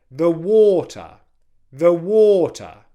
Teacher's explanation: low, high, low, unstressed, stressed, unstressed